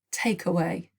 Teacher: where's the stress take away it's on the first syllable